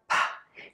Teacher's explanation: You're gonna press your lips together and then open them as air puffs out. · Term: P sound